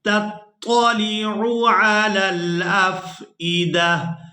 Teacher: اس ایک آنکھ والی تا کو ہم نے ہا میں بدل دینا ہے، دال کو اس ہا ساکن کے ساتھ ملائیں گے